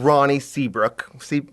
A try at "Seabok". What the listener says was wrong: Seabrook. Seabok. There's no R. Seabok. Seebok.